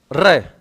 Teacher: ऐसा लगता है जैसे जीवा क्या कर रही हो? कंपन कर रही हो, 2-3 बार कांप रही हो, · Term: प्रकंपित व्यंजन